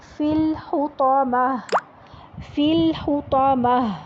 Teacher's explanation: آگے پڑھیں گے فا کو لام سے ملائیں گے، فل حطامہ، تو TAW تو کے ساتھ، اور میم کے بعد گول تا کو جب ہم وقف کر رہے ہیں تو ہا میں بدل دیں گے